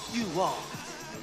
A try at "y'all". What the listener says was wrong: It ain't you all, it's y'all. Y'all. Y'all. Say it from right here with some soul. Y'all. Y'all.